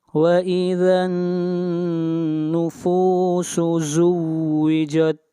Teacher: نون کے اوپر غنہ کریں گے، آواز ناک میں جائے گی